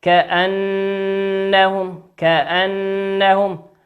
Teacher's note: النون مشددة هنا في قوله في كلمة كأنهم تغن بمقدار حركتين